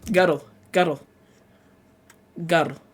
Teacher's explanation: after the letter R, sometimes you'll have an extra syllable on the word, so that girl becomes guddle.